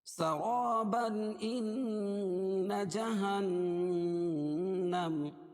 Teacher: اور اگر ایسی نوبت آ گئی تو ہم ملا کے پڑھیں گے تو اس کو اظہار حلقی ہوگا اس پہ کیونکہ تنوین کے بعد حروف حلقی کے 6 حرفوں میں سے حمزہ آ جائے گی تو اس کو ظاہر کر کے بلا غنہ کے پڑھیں گے